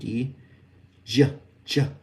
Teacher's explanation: So remember the shh voiced. So if we hum while saying shh, if we add the voice stop to that, which is the d j, we actually create the j sound.